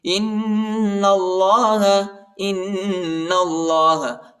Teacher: حتی یأتی اللہ بأمرہ ان اللہ، حمزہ کو نون کے ساتھ ملائیں گے، نون کو لام کے ساتھ ملائیں گے، الف نہیں پڑھا جاتا، الف کے اوپر حرکت نہیں ہے، اور اللہ کے نام کو موٹا پڑھیں گے، پر پڑھیں گے اور ادھر غنہ کریں گے.